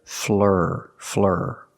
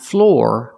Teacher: I cannot use the or sound like floor and more I have to use the sound ER